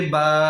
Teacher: আমাদের দুই ঠোঁটের ভিজা অংশ থেকে বা।